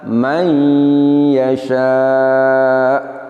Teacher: hamzah kita sukun dan kita nabr atau nabrohkan, sedikit ditekan suaranya